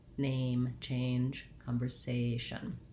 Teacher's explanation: And watch out for A, that you make sure that you make two sounds. It's a diphthong, A. So I'm tense and then I relax.